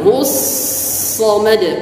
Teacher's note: Sad di sini adalah isti'la. Efeknya adalah tafkhim dengan tebal. Hus samad. Ujung lidah dengan gigi seri bawah.